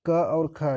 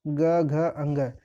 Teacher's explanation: क और ख ये अघोष हो जाएगा ग घ अंग यह जो होता है ये सघोष होता है